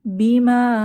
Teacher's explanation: এটা হচ্ছে মাদ্দে মুনফাসিল বা বিযুক্ত মাদ এখানে আমরা চার হারাকা পরিমাণ টেনে পড়বো